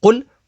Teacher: قاف حروف مستعلیہ میں سے ہے تو اسے پر یعنی موٹا پڑھیں گے